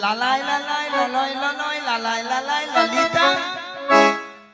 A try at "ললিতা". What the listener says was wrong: মাসি ওটা লালাই লালাই ও নয় আর ললয় ললয় ও নয়, বলো ললিতা।